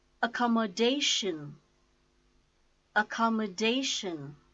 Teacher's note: A-com-mo-dash-n. The stress is on dash, fourth syllable.